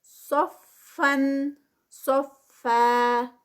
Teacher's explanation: صفن صفا، صاد ہیوی، اور اس کو جب روکیں گے تو 2 کاؤنٹس پہ، اور صاد جو ہے وہ ہیوی ہے اور فا آگے لائٹ ہے